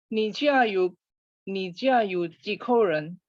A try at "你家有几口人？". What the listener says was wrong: Ya, kebalik berubah nadanya. Jadi yang berubah nada itu ji, nada 2 ya. 几口人.